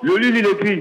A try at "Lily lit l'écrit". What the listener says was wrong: Non, c'est pas le lit. Non, c'est pas le lit.